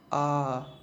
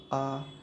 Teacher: ना जीभ उठती है कुछ नहीं। आ कहाँ से आवाज़ आती है, कंठ से।